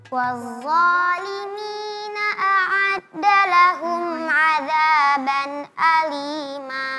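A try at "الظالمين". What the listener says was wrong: Ya, jangan wazza, tapi keluar lidahnya dikeluarin sedikit lagi sampai ke gigi seri.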